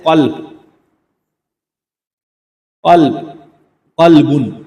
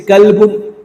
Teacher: اب قاف کے ساتھ اگر ہم اس کو موٹا کر کے صحیح ادائیگی کے ساتھ پڑھیں گے تو یہ قلبن ہے